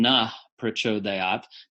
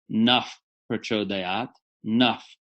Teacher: Instead of na, most people are saying na prachodayat, but it's actually naf prachodayat, naf. It's just like an F, but using only the lips. So linguists call this a bilabial fricative. · The H sound acquires almost the character of an F sound, only in Vedic Sanskrit and only before a P.